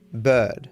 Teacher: In Australian English, you don't pronounce R at the end of words or before consonants.